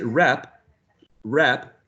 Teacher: you stop the air and then there is not like a real an actual release of the air in a burst